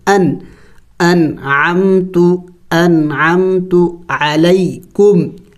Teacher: تو یہ ان حروف میں سے کوئی ایک حرف اگر نون ساکن یا تنوین کے بعد آئے گا تو وہاں اخفا نہیں کیا جائے گا، یعنی ناک میں آواز نہیں چھپانا پڑے گا، بلکہ نون اور اس تنوین کو ظاہر کر کے پڑھنا ہوگا